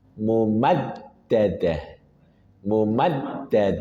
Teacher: ada dalal bertasydid pastikan ada nabrah atau penekanan mumaddadah mumad Kemudian diakhiri dengan ta marbutah. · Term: dal bertasydid